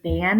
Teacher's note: Spanish does not distinguish between the b and the v sound, so both are produced like a soft B.